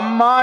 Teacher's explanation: அம்மா என்றால் அ குறில், அதுக்கு ஒரு மாத்திரை. இம் அதற்கு அரை மாத்திரை, மா என்கிற நெடிலுக்கு 2 மாத்திரை. இந்த 3.5 மாத்திரை ஒலிப்போடு அம்மா என்கிற சொல்லை உச்சரித்தால் அது இயற்றமிழ்.